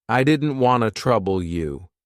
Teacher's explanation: Here we connect didn't and want and drop the t.